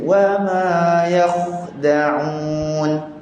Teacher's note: Yang kedua, masa kita sebut wama yakhda'un, wama tak nak terpengaruh dengan kha, tak nak bunyi wama, mim nipis.